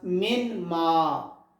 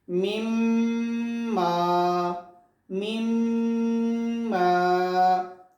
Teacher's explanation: Noon merged into the next letter Mim.